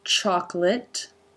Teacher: Tongue through the teeth for the L and then up to make the T, which is a stop here.